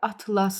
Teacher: Sözün sonu s ilə bitərsə bu xəritələr toplusu deməkdir və vurğusu əvvələ düşür.